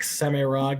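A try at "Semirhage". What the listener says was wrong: I believe it's a soft G, just so you know. No, J. like Semirage, yeah.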